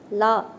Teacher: நா மேல் பற்களின் அடியை தொடுவதால் லகரம் தோன்றும். இது வா போல இருப்பதால் வகர லகரம் என்கிறோம்.